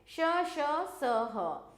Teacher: इन व्यंजनों के उच्चारण में वायु तेज गति से मुंह के भागों से रगड़ खाती हुई बाहर निकलती है, जिससे ऊष्मा यानी कि गर्मी उत्पन्न होती है, इसलिए ऐसे व्यंजन ऊष्म व्यंजन कहलाते हैं। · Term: उष्म व्यंजन